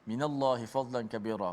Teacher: Dan huruf lam dibaca dengan tarkik nipis.